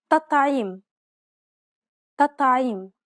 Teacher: It's as though both of the T's were dark. It's actually easier to pronounce both of them dark as opposed to pronouncing one soft and one dark. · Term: dark T